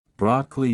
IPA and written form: ˈbrɑːkəli (Broccoli)